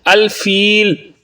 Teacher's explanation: الفیل یہاں پر مد عارض ہے، اس لیے یہاں پر آپ 1 یا 2 یا 3 الف کی مقدار کے برابر لمبا کریں گے